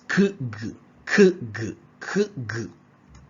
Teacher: Velar, a bit above the hard palate, all right. The tongue approaches the soft palate or velum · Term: Velar sounds